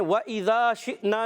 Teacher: واؤ کی ادائیگی ہونٹوں کی گولائی سے